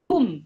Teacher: huruf kaf tu biar biar ada udara sikit. Kum bukan kum bukan ka bukan ka bukan huruf K dia ada udara kum.